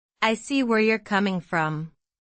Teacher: The stress falls on see and coming.